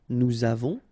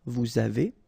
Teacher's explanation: final S not pronounced, and then we make this little link between the two